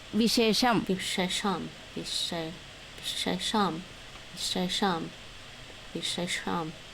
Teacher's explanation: the first one's palatalized, second one's retroflexed.